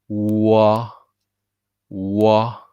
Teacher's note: start with a perfect circle of your lip and then relax. There's a transition.